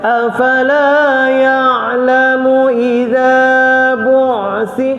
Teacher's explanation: Tidak keterlaluan rokhawah, tidak terlalu syiddah, di tengah-tengah. Itu sifat ain. Jadi kalau kita baca afala ya'lamu idza bu'si, dan dia dan tidak boleh putus dan tidak boleh terlalu mengheret.